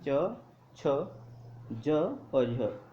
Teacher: तो साथियों च जे स्पर्श व्यंजन नहीं बल्कि स्पर्श संघर्षी है। ठीक है, हमारी जीभा बहुत ज़्यादा स्पर्श संघर्ष करती है तालु के साथ